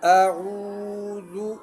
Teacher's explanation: واو مدہ ہے، واو مدہ میں مد کی مقدار ایک الف ہے، ٹھیک ہے، اور ذال کو نرم پڑھنا چاہیے، نرمی کے ساتھ پڑھنا چاہیے، نرم حروف میں سے ہیں۔